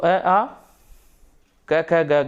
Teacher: तो अ, आ, क, ख, ग, घ, अंग और विसर्ग, इनका उच्चारण स्थान होता है, इनका उत्पत्ति स्थान होता है कंठ